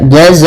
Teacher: Cara membacanya yaitu fathahnya masuk kepada mim, kemudian kita tahan gunnahnya karena ada bil gunnah, yaitu idgham memasukkan, bi dengan gunnah berarti dengan gunnah, kita masukkan tanwinnya dengan menahan gunnahnya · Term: idgham bil gunnah